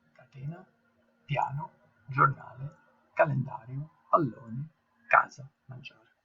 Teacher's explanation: In this case, the stress is laying on the second last syllable. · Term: paroxytone words